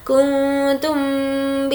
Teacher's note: نون کی آواز کو ناک میں چھپائیں گے کیونکہ اخفا کا قاعدہ ہے. کنتم یہاں پر ہمیں غنہ کرنا ہے.